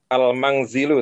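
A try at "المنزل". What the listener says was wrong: Nah, tidak boleh pakai ikhfa. Al-manzilu.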